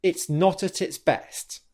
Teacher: The second thing you might have noticed there is that I'm releasing the T sound in not and at the beginning of the next syllable · there is subtle pauses in airflow for the T sound and the plosive consonants